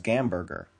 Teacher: Russians don't have the English h sound, but rather replace it with a g instead. For instance, Russians pronounce hamburger as gamber.